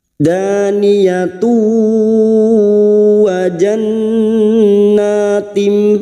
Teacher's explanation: Sekarang di sini kita wasol tak marbutoh yang berharokat duma tanwin bertemu wawu idgham biguna, masuk ke huruf wawu dan mendengung selama 3 harokat. Daniyatu wa jannatim, wa jannun yang bertasdid gunna musyaddadah kita dengungkan selama 3 harokat.